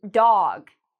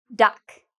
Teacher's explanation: Well, dog has a different vowel sound than duck. Dog is longer.